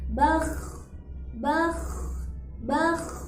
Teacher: Kha ketika sukun sedikit diseret dengan bibir bawah sedikit dinaikkan ke atas